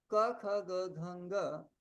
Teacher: एतेषां वर्णानां जिह्वामूल इति स्थानम् उक्तम्